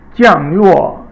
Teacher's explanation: 降落 is all fourth tone. 降 fourth tone, falling tone. 落 falling tone, and that means to land.